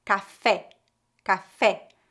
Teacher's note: preste atenção ao som bem aberto e forte no final